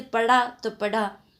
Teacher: ड़े के स्थान पर डे का प्रयोग प्रवृत्ति मिलती है